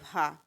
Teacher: हिंदी की स्पर्श घोष महाप्राण ओष्ठ व्यंजन ध्वनि है